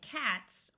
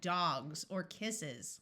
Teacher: e s to make something plural s can have two sounds it can be the sound of s like in cats or it can take on the z sound like in dogs or kisses